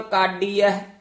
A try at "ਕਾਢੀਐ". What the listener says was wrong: ਕਾਢੀ ਹੈ, ਡੱਡਾ ਨਹੀਂ ਹੈ, ਕਾਢੀ ਹੈ।